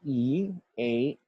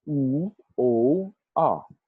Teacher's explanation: The former are pronounced with the tongue in the front of the mouth, the latter with the tongue in the back.